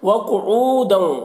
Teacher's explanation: واو مدہ ہے، اسے ایک الف کے برابر کھینچ کر پڑھیں گے